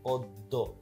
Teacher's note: শব্দের আদ্য অ এর পরে জফলাযুক্ত ব্যঞ্জন বর্ণ থাকলে সেক্ষেত্রে অ এর উচ্চারণ প্রায়শই কি হয়ে থাকে? ওকারের মতো হয়।